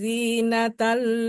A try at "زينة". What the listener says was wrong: Zinatal. Zainya kurang tadi.